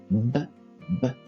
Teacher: il y a pas passage de l'air l'air trouve une difficulté pour sortir de la bouche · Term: arrêt du passage de l'air